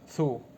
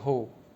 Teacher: Th becomes h and then disappears.